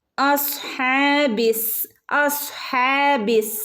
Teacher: ഹംസത്തുൽ വസിൽ വന്നിട്ടുണ്ട് പക്ഷേ അതിന് യാതൊരു ശബ്ദവുമില്ല